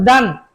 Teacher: জিহ্বার আগা দাঁতের আগা থেকে উচ্চারণ করুন